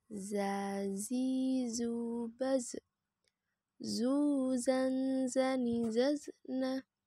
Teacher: dikeluarkan dengan ujung lisan kita hampir di atas gigi seri bagian bawah diucapkan dengan mengalir suara tanpa diiringi dengan udara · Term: huruf dza